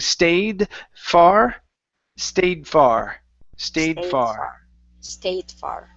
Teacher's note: the connection between these two was a little off okay so connect that D to the F